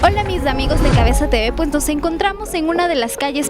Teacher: las “s” se pronuncian completas, la “ll” y la “y” suenan igual · no hay una aspiración marcada ni pérdida de sonidos como ocurre en algunas regiones caribeñas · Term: acento quiteño